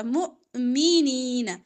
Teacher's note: حمزہ پہ جزم جھٹکا